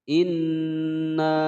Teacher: gunnah musaddadah, ditekan ditahan 2 ketukan, kemudian dibaca panjang selama 5 ketukan